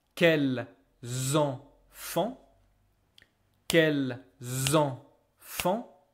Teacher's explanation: I will use this S right here to make the liaison z